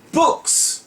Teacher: a voiceless sound such as book, the adding S is pronounced as S, as in books. 例えば S の前にある音が book の K の場合、喉に手を当てて K と言ってみよう。K 震えていないから無声音だね。無声音の後には S という音でくっつくよ。だから books と発音します。